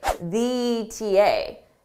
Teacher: if I did a more stressed E in the, it would really blend together with ETA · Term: blended together